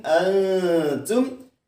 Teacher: Nun mati disamarkan, kemudian masuk dengan berdengung antum, karena dia adalah hukum bacaannya ikhfa.